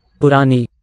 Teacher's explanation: The N would have been a retroflex in Sanskrit. Here it's dentalized. It's reverted back.